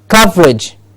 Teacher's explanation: Cov gets the stress.